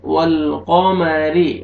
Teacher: वल ऐसे नहीं पढ़ना, वल ऑफ को मोटा करके पढ़ेंगे। वल्क़मरि, रॉ के नीचे ज़ेर है, रॉ को बारीक करके पढ़ेंगे